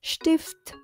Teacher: Vokal I dibaca pendek, lalu huruf T di belakang huruf F juga harus terdengar.